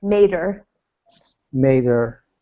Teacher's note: Yeah, these kinds of pronouns with the H in front. If the word in front has a consonant sound at the end, like d in made, then we drop the H and it's a little faster.